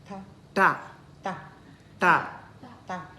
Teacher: Our tongue curls back and then tap on the upper palate. Ta. Okay, so it taps on the upper palate. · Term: curl one